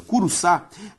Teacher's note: Curuçá tem como sílaba tônica a última, logo uma palavra oxítona.